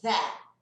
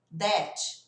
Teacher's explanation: você vai fazer esse som de Z, só que com a língua entre os dentes. Vai sair isso aqui, ó. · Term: som de TH